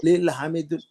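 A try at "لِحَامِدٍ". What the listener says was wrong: रखे हुए नाम को अल नहीं लगता ना बच्चों। रुको, लिल नहीं आता, पहले रुक। पहले वर्ड क्या है देखो, हा मीम दुन है। ये रखा हुआ नाम है, प्रॉपर नाउन है, झोले में डाल के रखा हुआ नाम है एक लड़के का।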